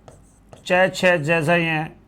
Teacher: च, छ, ज, झ, य, इनका उच्चारण तालु की मदद से होता है। जो तालु की मदद से बोलते हैं वो कहलाते हैं तालव्य, जो कंठ की मदद से बोलते हैं वो कहलाते हैं कंठ।